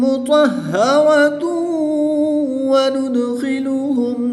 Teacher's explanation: 2 پیش کی تنوین کے بعد واو حروف یرملون میں سے ہے تو یہاں پر بھی ادغام مع الغنہ ہوگا، یہاں پر بھی ہم غنہ کر کے پڑھیں گے